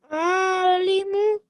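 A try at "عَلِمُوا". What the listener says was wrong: Nice.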